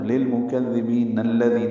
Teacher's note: نون کو الذین کے لام سے ملانا ہے